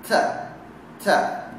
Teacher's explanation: Sifatnya adalah hamas. Ada decis di situ dan ada mengalir udara.